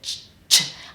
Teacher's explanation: the sound ch explodes and then it's over, so I can't extend it. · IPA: /tʃ/